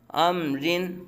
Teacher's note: رجال، را کے نیچے زیر را باریک پڑا جائے گا، لام باریک پڑا جائے گا۔ امرن، را کے نیچے دو زیر را باریک پڑا جائے گا۔ فاصبر، را ساکن سے پہلے زیر را باریک پڑا جائے گا۔